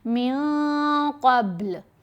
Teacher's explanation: نون کی آواز کو ناک میں بھی چھپانا ہے, ساتھ غنہ کرنا ہے. من پڑھیں تو نون ظاہر ہو جائے گا, پڑھیں گے من قبل. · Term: احفا